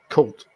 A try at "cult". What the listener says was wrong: Cult with a L sound.